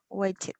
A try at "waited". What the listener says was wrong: waited. Very good.